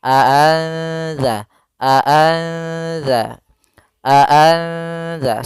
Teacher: cara membacanya adalah nunnya disamarkan kepada huruf dalal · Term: ikhfa